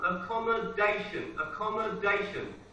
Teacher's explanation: The stress is on the fourth syllable.